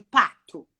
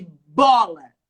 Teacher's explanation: embora os dois utilizem os dois lábios são fonemas que a gente fala que são fonemas bilabiais